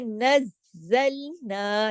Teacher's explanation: نز سختی سے کیوں جوڑا؟ تشدید ہے، دو زا ہے یہاں پہ